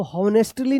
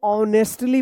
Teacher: यहाँ पे H silent होगा, इसका उच्चारण नहीं होगा